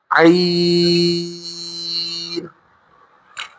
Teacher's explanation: عین کی آواز حلق کے درمیان سے آئے گی۔ عین، غین حروف مستعلیہ میں سے ہے، موٹا پڑا جائے گا۔